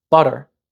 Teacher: in my North American accent I pronounce it with butter with that tap instead of a strong top but if a foreigner learning English